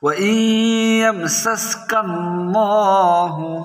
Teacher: এখানে আল্লাহ শব্দের ডানে জবর এসেছে, তাই আল্লাহ শব্দের লামের উচ্চারণ আমরা মোটা করে পড়ব